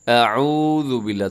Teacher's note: تھوڑا عین کو کھینچیے گا کیونکہ ساتھ واو ہے